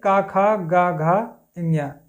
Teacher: ये कंठ से बोले जाते हैं। कंठ से इसका उच्चारण किया जाता है। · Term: क वर्ग